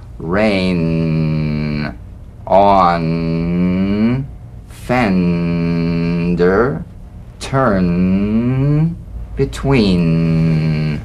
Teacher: The N is a nasal consonant made with the tongue blade to the upper gum ridge. It's most resonant and it's well forward placed.